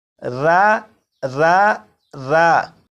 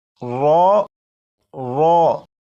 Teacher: اگر آپ اپنی آواز کو پر یعنی موٹا کر کے پڑھیں گے تو را بھی پر یعنی موٹا پڑھا جائے گا